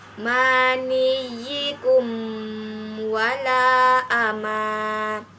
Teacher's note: mim mati bertemu dengan huruf wow maka dibacanya jelas di bibir dan mulut tertutup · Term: hukum izhar syafawi, izhar syafawi